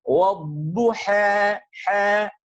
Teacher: Taklil itu merupakan bacaan antara fathah dengan kasrah, akan tetapi kecenderungannya terhadap fathah lebih banyak, sehingga disebut dengan imalah, kemiringannya itu sedikit, yang disebut dengan taklil.